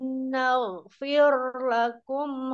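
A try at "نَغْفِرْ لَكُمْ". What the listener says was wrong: Ditipiskan ro kasrahnya.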